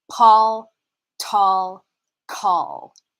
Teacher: we have something called aspiration in this particular context it means a puff of air felt at the lips following a p t or k sound